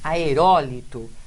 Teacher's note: é a antepenúltima sílaba forte